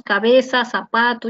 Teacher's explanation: Nosotros no pronunciamos la interdental, que es la famosa Z española. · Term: El ceseo